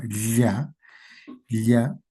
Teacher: Pero a veces la Y en algunas zonas está doble ya, doble L, ¿no? En la que la lengua choca con el paladar, ya el aire sale por los costados de la lengua. Ya, ya. Hay un contacto del paladar con la parte media de la lengua.